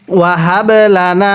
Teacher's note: বাটা কলকলা করব, কারণ বায়ে যদি সাকিন হয় কলকলা করে পড়তে হয়।